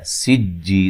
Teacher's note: سین کو باریک سیٹی سے ادا کریں گے. جی یا مدہ ہے تو وقف کی صورت میں مد کر سکتے ہیں.